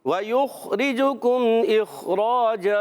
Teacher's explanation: اخ نہیں کرنا، کلکلا نہیں ہو جانا چاہیے